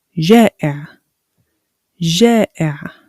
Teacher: So we have the glottal sound and we have the ain sound.